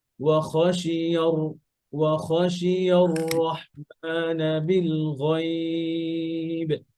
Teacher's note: এখানে খেয়াল করেন যে ওয়াওটা পাতলা খ মোটা